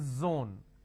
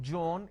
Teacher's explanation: they replace the z with a j